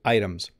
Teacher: when i say item i make a d sound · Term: flap